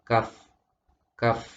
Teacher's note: lidah bagian belakang kemudian ketemu dengan langit-langit